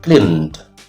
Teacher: This word ends with the sound n, which is voiced.